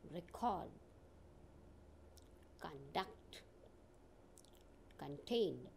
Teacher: see here the stress is on the second syllable · These words have stress on second syllable when they are used as a verb. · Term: functional stress